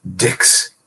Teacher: We devoice the Z sound.